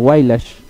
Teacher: una particularidad del habla del quechua huanca no que no sale mucho a veces técnicamente le llaman la consonante retroflexa